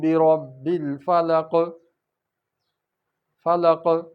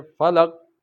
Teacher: تو قاف پڑھتے ہوئے جنبش پیدا ہوگی، قلقلہ ہوگا۔ اگر ہم پڑھیں گے فلق تو یہ غلط ہو جائے گا۔